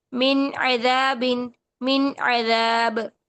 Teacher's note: बा पर कलकला करेंगे साकिन हालत में